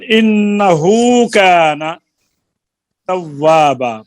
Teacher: پھر یہ اصل میں وہ ہے ہائے ضمیر کے صلے کی بات کر رہے ہیں کہ ہائے ضمیر کا صلہ جو ہے اس وقت ہوتا ہے جب اس کا ما قبل اور ما بعد دونوں متحرک ہوں, اور اگر ان میں سے ایک ساکن ہو یعنی تو پھر ہائے ضمیر کا صلہ نہیں ہوتا. اور صلہ کی مد جو ہے ایک الف کی مقدار ہوتی ہے, اور یہ اس وقت پڑھا جاتا ہے جب وصل کریں, اور اگر وصل نہ کریں تو پھر صلہ ختم ہو جاتی ہے.